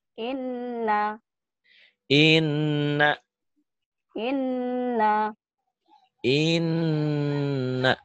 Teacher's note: Tapi ditahan dan dengung. Ditahan ada panjangnya. Satu alif sampai satu alif setengah. Kemudian ada dengung ke hidung. Itulah yang dikatakan gunnah.